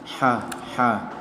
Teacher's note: salah satu huruf halqi yang keluar dari tenggorokan